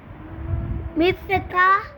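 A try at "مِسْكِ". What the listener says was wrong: नहीं की जेर है ना बेटा। मिस की।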